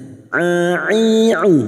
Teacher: Wala'ibah huruf ain jangan samakan dengan hamzah. A'i'u huruf ain memiliki sifat tawasud dan jahar